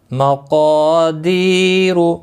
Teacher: اور را پیش کی وجہ سے موٹا پڑا جائے گا